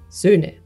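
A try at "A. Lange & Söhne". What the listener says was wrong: Yeah, yeah. Just a bit longer at the end. Söhne.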